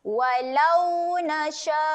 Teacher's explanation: Sya ni kita akan baca dia dengan panjang sebanyak 4 harokat.